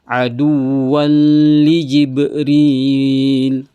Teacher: adua ada wau tanwin di atasnya bertemu dengan huruf lam berarti idgham bilagunah aduwual aduwal jadi bukan lagi aduan tanwin di sini langsung loncat ke huruf lam aduwan liibril ah kemudian ada huruf ba yang sukun Berarti dia qalqalah harus dipantulkan.